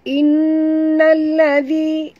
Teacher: nun bertasydid, wajib dengung, wajib al-gunah, dengung dua harakat